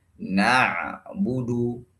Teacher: penyebutan harakat dhammah tidak sempurna melainkan dengan membulatkan bibir sebulat-bulatnya. Berarti tidak boleh membaca na'budu.